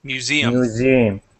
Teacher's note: The accent is at the end of the word museum, so on that E